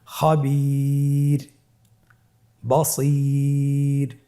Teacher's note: রয়ের চতুর্থ অবস্থা, র হরফটি ওয়াকফের কারণে সাকিন হলে তার ডানে ইয়া সাকিন থাকলে তাহলে রকে পাতলা করে পড়তে হবে।